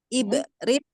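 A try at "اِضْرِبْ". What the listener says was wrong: Dot dulu. Bukan ibrit, bukan ba, tapi idrib. Idrib. Jangan dikolkolkan dotnya, jangan dikolkolkan.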